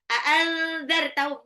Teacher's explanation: nun sukun ketemu dha, nggak boleh dibaca jelas, harus samar